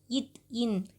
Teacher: நாவின் நுனி அன்னத்தின் நுனியை பொருந்துவதால் பிறப்பவை